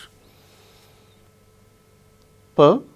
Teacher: P is a voiceless sound. It is a voiceless bilabial plosive. Plosive. When we utter P, air comes out all of a sudden from our mouth.